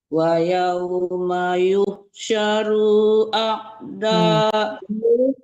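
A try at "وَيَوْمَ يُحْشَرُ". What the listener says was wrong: Tidak panjang runya, dipercepat. Wa yauma yuhsyaru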